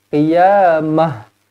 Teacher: Contoh, kalau kita berhenti dekat sini, ta marbutah ini akan bertukar kepada huruf ha mati